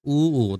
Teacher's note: এটা কিন্তু ঠোঁট লাগে উ, তাই না? ঠোঁটটা গোল হয়ে যায়, এটা ওষ্ঠধ্বনি।